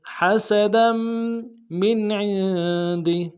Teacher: دال کے اوپر تنوین ہے، آگے میم کے ساتھ ملانا ہے، تنوین کو غنہ کرتے ہوئے · میں اظہار ہوگا، عین کو نون ساکن کے ساتھ ملانا ہے، عین کو موٹا ادا کرتے ہوئے نون ساکن میں غنہ کریں گے